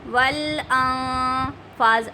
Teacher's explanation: okay, اگر یہاں پہ حروف ہلکی میں سے کوئی حرف آ جاتا تو ظاہر کر کے غنہ ہوتا، اب حروف اخفا میں سے آ گیا اس لیے ہم نے چھپا کر غنہ کیا ہے